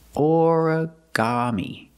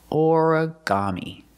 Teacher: put the stress on the first syllable and the third syllable